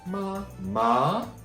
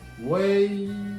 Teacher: Yeah, if you remember the 4 sounds, number 2 sounds, ma. This is the number 2 sound, ma, going up